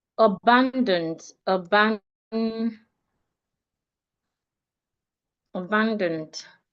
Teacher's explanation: Abandoned I'm stressing the second syllable.